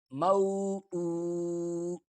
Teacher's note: الٹا پیش ایک واو کی مقدار کھینچا جاتا ہے۔ حمزہ الٹا پیش او، مو او۔